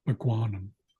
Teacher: And then when we added anumm we changed this rounded K to a rounded G which is a voiced uh sound. So then it becomes a guanum.